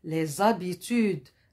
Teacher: J'ai mis la liaison parce que ce H, c'est un H muet.